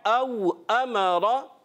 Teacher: रा को पुर रखेंगे, मोटा करके अदा करेंगे।